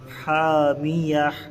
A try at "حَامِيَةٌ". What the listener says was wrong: وہ یہ ہا نہیں، یہ ہا الگ، یہ ہا الگ، حامیہ، یہ